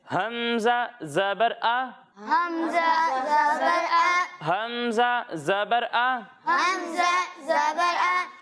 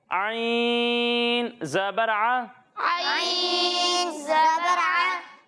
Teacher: جب ہم حمزہ کی ادائیگی کریں گے تو اسے حلق کے نچلے حصے سے پڑھیں گے